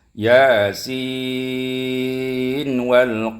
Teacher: ada nun ketika dia diwasalkan, ya, bertemu dengan waw, namun tidak diidghamkan, dibaca dengan izhar mutlaq